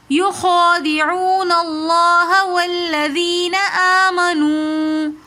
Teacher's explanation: لفظ اللہ سے پہلے زبر ہے تو اس لیے ہم نے لفظ اللہ کو موٹا پڑھا